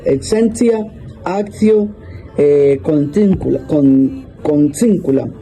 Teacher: La T, cuando está acompañada de la unión de IE, de I, A, I, O y U, suena como ts